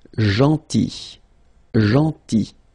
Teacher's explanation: this final L is not pronounced.